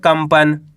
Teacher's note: यहां पे आधा म का उच्चारण निकालेंगे